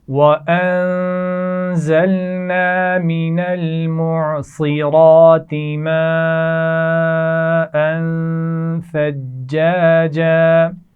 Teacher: صاد کو موٹا پڑھا جائے گا، را کو بھی موٹا پڑھا جائے گا، ماءً بڑی مد ہے، خوب کھینچ کر پڑھیں گے اور یہاں پر غنہ بھی ہوگا، حمزہ پر آپ دیکھ رہے ہیں سرخ رنگ میں لکھا ہوا ہے، ثجاجا جیم پر شد ہے، سختی سے ادا کیجئے۔